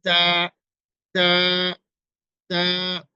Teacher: তা চিকন ভাবে উচ্চারণ হবে, পাতলা উচ্চারণ